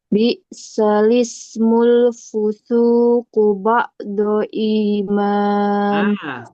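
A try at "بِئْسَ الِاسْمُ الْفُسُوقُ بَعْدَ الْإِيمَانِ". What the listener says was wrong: Bukan ba'do. Ba'dal. Danya kurang jelas. Ba'dal iman.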